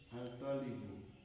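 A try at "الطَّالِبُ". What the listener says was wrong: at. Jadi to itu huruf apa? Asy-syamsiyah, ya. Berarti at-talibu, bukan al-talibu, tapi at-talibu.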